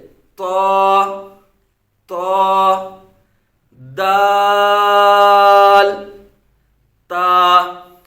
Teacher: जुबान के नोक और ऊपर के दांतों की जर से ये तीन हरूफ अदा होते हैं जैसे जुबान के नोक को ये ऊपर वाले जो दांत हैं